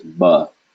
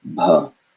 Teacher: The first one has no air, and that is ba. The second one has air, and that is bha.